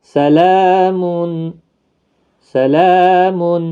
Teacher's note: جب کھڑی حرکات کے بعد ساکن حرف آ گیا تو اس کو بھی 3 سے 5 الف کی مقدار کے برابر کھینچ کر وقف کریں گے